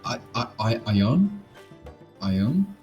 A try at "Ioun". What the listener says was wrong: It's Ioun. You're close. You're close. It's something with your accent. you're saying it like two words. You're saying I own. It's Ioun.